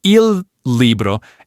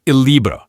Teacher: If you say them as 2 separate words, il libro, it's a little bit clunky, but at a natural pace, Italians just smoothly merge them into one sound